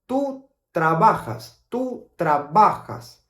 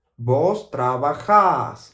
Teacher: So the AS at the end, we pronounce it more like a long vowel sound.